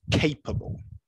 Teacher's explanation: I'm going to say the word with the stress on the first syllable